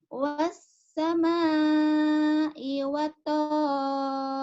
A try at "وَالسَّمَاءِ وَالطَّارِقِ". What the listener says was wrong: Watnya nyamber. Wassama'i wattariq. Nyamber. Ada tasdidnya kurang nyamber. Riq. Jangan rike. Riq. Ada qaqalah o.